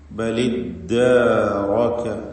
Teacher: ഇൽതിഖാഉ സാക്കിനൈൻ എന്ന പ്രശ്നം അവിടെ സംഭവിച്ചതുകൊണ്ട് ആദ്യത്തെ സുക്കൂനുള്ള ലാമിന് കസ്റ നൽകി ഉച്ചരിക്കുകയാണ്. തഹ്രീക്ക് എന്ന പരിഹാരം സ്വീകരിച്ചുകൊണ്ട് ബലിദ്ദാറക, ഇവിടെ റാഇന് മാത്രം തഫ്ഹീം നൽകണം എന്നതും പ്രത്യേകം ശ്രദ്ധിക്കുക.